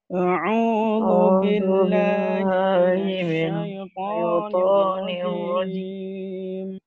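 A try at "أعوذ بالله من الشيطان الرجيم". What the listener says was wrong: Jangan lewatkan hidung. A'udzu billahi. Itu masih lewat hidung. A'udzu billahi. A'udzu billahi.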